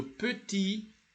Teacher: the T is not pronounced when it is isolated